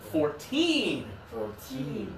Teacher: when it's the lower number, it's the final syllable.